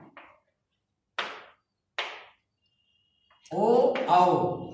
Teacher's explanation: ओ औ कंठोष्ठ, ये ओठ और कंठ के माध्यम से बोले जाते हैं